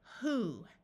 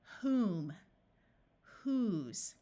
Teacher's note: the W is silent and we just pronounce the h sound · we are going to pronounce the O as the long OO sound, the oo of moon